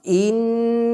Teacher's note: জিহবার কিনারা আর তার বরাবর উপরের তালু যেটা লামের মাখরাজের কাছাকাছি লাগবে সাথে সাথে নাকের বাঁশি থেকে গুন্নাহ উচ্চারিত হবে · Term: নুনের মাখরাজ